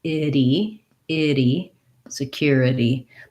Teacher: they have to go from the lax I to the tense E with the flap in between